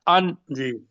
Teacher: یہ جو نون آپ ان کہہ رہے ہیں نا، اس کو تھوڑا جی سا بھی لمبا نہیں کرنا